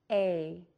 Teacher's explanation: To make this long vowel sound, you will need to open your mouth wide. Your lips will be pulled back and tense. The tip of the tongue is in the bottom of the mouth near the bottom front teeth. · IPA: /ei/